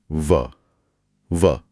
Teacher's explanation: जब कोई व बोलता है तो ऊपर के दांत हल्के से नीचे के होठ के अंदरूनी हिस्से को स्पर्श करते हैं। व हां नीचे के होंठ ऊपर जा रहे हैं और ऊपर के दांतों को छू रहे हैं। यह संयोजन पूरी वर्णमाला में कहीं और नहीं मिलता। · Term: दंतोष्ठ, दंतोष्ठ्य